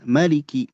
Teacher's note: Maliki mimnya pendek tapi riwayat lain ya. Adapun kita baca dengan riwayat Imam Hafs maka dibaca dua harakat ya.